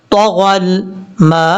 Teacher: اور یہاں پر میم کے بعد الف الف کے اوپر مد ہے، اس مد کو مد متصل کہتے ہیں اور اس کو 2.5 الف کے برابر لمبا کرنا ہے